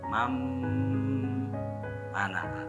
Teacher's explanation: Jadi asalnya man mana, jadi mam mana, mam harus dengan sengau kan bigunnah. Man mana, boleh di situ ulama ahli qiraah memberi kelonggaran ya, di situ boleh didiamkan dulu sehingga muncul atau terasa gunnahnya, boleh sampai didiamkan 3 harokat ya. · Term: idgham bigunnah